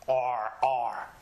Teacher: The sound comes from deep in the back of our throat.